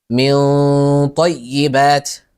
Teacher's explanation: الغنه مفخمه لانها حرف استلاء